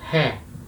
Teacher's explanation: aqui agora eu já falo essa vogal como se eu tivesse um H na frente, né? Uma aspiração.